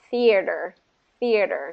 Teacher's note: Just make sure with the voiceless sound, there's a little bit of an airflow that comes out